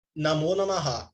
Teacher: Duas modificações acontecem. O A que precede a visarga, ele se transforma em O e a visarga desaparece.